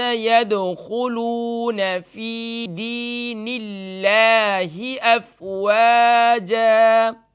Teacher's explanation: یہاں دیکھیے اللہ کا نام یہاں بھی آیا ہے، لیکن یہاں پر اللہ کے نام کو باریک کر کے پڑھیں گے، لائٹ کر کے پڑھیں گے